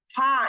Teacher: এটা মাখরাজ হচ্ছে হচ্ছে নিচের ঠোঁটের পেট উপরের দাঁতের আগার সাথে